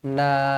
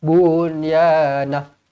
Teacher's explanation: Mad iwad dia kena dua harakat.